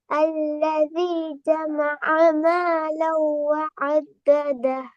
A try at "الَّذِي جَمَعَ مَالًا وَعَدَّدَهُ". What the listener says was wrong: அல்லதி நீட்டீங்க தானே? அல்லதி நீட்ட தானே வேணும். அது நீட்டத்தை இன்னும் லைட்டா நீட்டி ராகத்தை எடுத்துக்கோங்க. மிச்ச நீட்ட வேணாம். பிளவு. அல்லதி ஜமஅ. அல்லதி ஜமஅ என்று இல்லாம அல்லதி ஜமஅ.